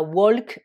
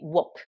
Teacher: vous avez la lettre L qui est muette